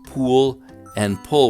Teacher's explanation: now vowels before l sounds are slipping all over the place not just in utah one of the places they slip is for pool and pull to sound similar · many Utahns pronounce pool and pull with the same vowel